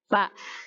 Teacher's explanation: Jadi ujung gigi kita yang bagian atas bertemu dengan bibir bagian bawah, perut bibir bagian bawah merupakan makhraj fa